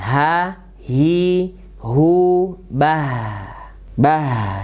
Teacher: Alaihim ya, alaihi ketemu ha besar ya. Di mana makronya ha? Yaitu di pangkal tenggorokan. Dan sifat hurufnya tipis